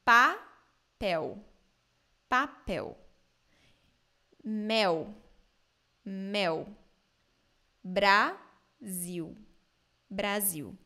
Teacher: the L in the end of words and syllables in Brazilian Portuguese sound like ooh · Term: the L sound